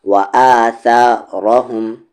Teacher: را یہاں پر ہیوی ہے اور باقی اس ورڈ میں جتنے بھی حروف ہیں وہ سارے کے سارے لائٹ ساؤنڈ پہ پڑھے جائیں گے